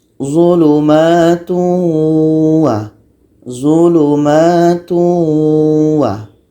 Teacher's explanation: Ini tanwin bertemu waw. Tanwin kita masukkan kepada bunyi waw. Jadi bunyi tanwin ini hilang. Menjadi zulumatu wa. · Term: idgham